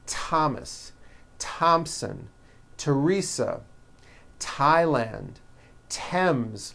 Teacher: they are pronounced as if they were spelled with a normal T